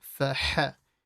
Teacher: So fa. And then the ha from the middle of the throat. Make sure it's strong.